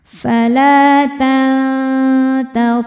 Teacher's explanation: Selanjutnya ada ikhfa hakiki aqrab ya. Karena nun sukun bertemu ta, maka dibaca nunnya samar-samar menuju ta disertai dengung.